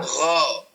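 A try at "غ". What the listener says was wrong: Nah, hati-hati, Pak. Jangan sampai ada angin yang keluar, Pak. Oh, tebalkan. Bedanya gho dan kho, dia secara tempat sama. Secara sifat banyak yang sama. Tapi di sini kho ada angin yang keluar kho yahsabu anna malahu akhlada. Sementara gho tidak.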